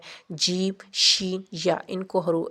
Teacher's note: زبان کے درمیان اور تالو کے درمیان سے ادا ہوتے ہیں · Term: شجریہ